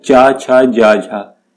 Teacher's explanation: जब हम इनका उच्चारण करते हैं इन व्यंजनों का, तो हमारी जो जीभ है वो तालु को टच करती है। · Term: तालव्य व्यंजन